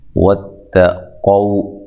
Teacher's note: تا کو باریک پڑھنا ہے، قاف کو موٹا ادا کرنا ہے